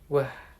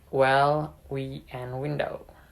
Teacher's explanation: This is a voiced labiovelar approximant sound. It is produced by rounding the lip and bringing them close to the back of the mouth while simultaneously constricting the airflow.